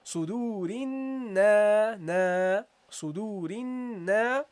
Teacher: you prolong the noon here with the fatha and the alif